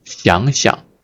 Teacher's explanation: So when this 想, the third tone verb used in reduplication, it changed to the second tone, 想, 想 想, 想 想, and the second character is a gentle tone. I call it the gentle tone, right? You don't push yourself.